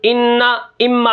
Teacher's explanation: انا، اما میں جو غنہ ہوتا ہے ناک میں آواز لے کے جاتے ہیں